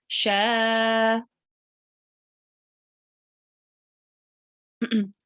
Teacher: Okay, so the rule which comes into place here is alif mad. Okay, so what we do with the sheen, we prolong it for 2 seconds.